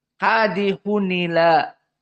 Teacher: ditulis Ini dia yang diinginkan dengan tanwin maka di saat annaql Hamzah di sini dihilangkan Ila jadi tidak ada lagi Hamzah nah dipindahkan harakatnya kepada Nun asakinah